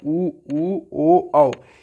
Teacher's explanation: इसको जब आप बोलेंगे तो देखेंगे ओष्ठ गोलाकार हो जाता है